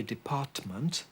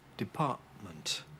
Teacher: I was there using a glottal stop before the M